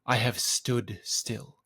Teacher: two unstressed syllables then the two stresses of Stood Still · 2 unstressed syllables, then the 2 stresses of stood still. That stood in the down position is just a very heavy word, and so it's just more natural to emphasize stood over have. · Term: double iamb